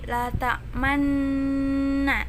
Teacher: Ismam itu mencampurkan bacaan doma dengan bacaan sukun. Dengan cara membacanya, bibirnya seperti kita berbicara huruf U. Jadi la ta'manna agak dicondongkan.